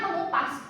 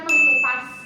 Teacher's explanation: fonem K berubah jadi bunyi sengau velar ng. Contohnya men ditambah kupas.